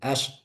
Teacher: Seperti huruf shin ketika sukun sebelumnya ada fathah, ash itu nggak sepenuhnya alirannya kedengar, cuma ash. Nah, terus habis itu nggak ada suara lagi, ash.